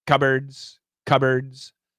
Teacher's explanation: when we say cupboards there's no p the p is gone